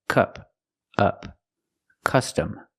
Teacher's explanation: Use the short sound like cup and up. It's relaxed and closed.